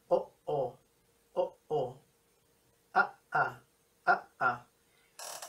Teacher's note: El sonido o el no sonido que se encuentra en medio, ese es la oclusión glotal. No es un sonido así, es como una especie de pausa.